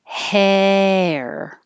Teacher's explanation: your jaw is middle not not open ah and your tongue is also in the middle rather flat